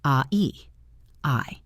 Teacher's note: Make sure you finish the movement. The word I moves from A to E. · The word I moves from ah to e.